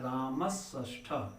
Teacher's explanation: रामस स के स्थान पर क्या हो जाएगा, खटकोण वाला यानी मूर्धन्य श होकर के बन जाएगा